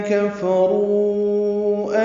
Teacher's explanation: کفرو میں کاف فا جلدی ادا کریں گے، کاف باریک ہے، را پر ہے کیونکہ اس پر پیش ہے، رو واو مدہ ہے اور اس کے بعد حمزہ آنے کی وجہ سے مد منفصل. کفرو چار حرکات ہم اس کو لمبا کریں گے · زعم الذین میں ذات صفیر کی آواز سے ادا کریں گے، عین وسط حلق سے ادا کریں گے، میم کو الذین کے لام سے ملا دیں گے، لام ذال نرمی سے پڑھیں گے، دی آئے مدہ ہے، دو حرکات لمبا کریں گے. کفرو میں کاف فا جلدی ادا کریں گے، کاف باریک ہے، را پر ہے کیونکہ اس پر پیش ہے، رو واو مدہ ہے اور اس کے بعد حمزہ آنے کی وجہ سے مد منفصل.